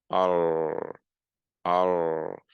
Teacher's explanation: The tip of the tongue is not really doing anything in the r in English, but the r in Arabic, it has everything to do with the tip of the tongue coming up and lightly touching the palate